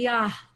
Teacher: Even saying the word Yah, it's very breathy.